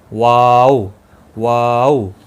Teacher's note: اور واو، دونوں ہونٹوں کی گولائی سے ادا ہوتا ہے، یعنی دونوں ہونٹوں کو گول کر کے ادا ہوتا ہے، آپس میں ملتے نہیں ہیں